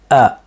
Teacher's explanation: So we start off with our hamza. The hamza is generated and articulated from the throat and the furthest part of the throat, so in the area of the vocal cords. And they separate to let the air out.